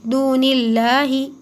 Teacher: اللہ کے لام کو باریک پڑھیں گے